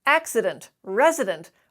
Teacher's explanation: where there is a vowel in between the d and the n it's almost always the schwa